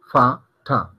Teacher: Hay como una breve explosión en la boca, de expulsión de aire. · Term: consonantes aspiradas